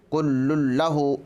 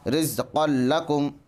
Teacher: ادغام بلا غنہ میں ناک میں آواز لے جائے بغیر پڑھیں۔ کل لہ، اس میں ادغام بلا غنہ ہو رہا ہے کیونکہ تنوین کے بعد ادغام بلا غنہ میں سے لام ہے، ادغام بلا غنہ میں سے لام ہے، اس لیے ادغام بلا غنہ ہوگا۔